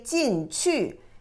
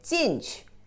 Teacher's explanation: But the second word 去 is a light touch tone.